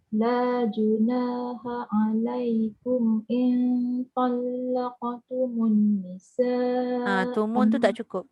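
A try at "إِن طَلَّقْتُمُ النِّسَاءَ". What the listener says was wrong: Tumun tu tak cukup. Tumun tu tak cukup. Tumun.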